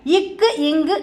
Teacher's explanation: நாவின் முதல் அன்னத்தின் அடி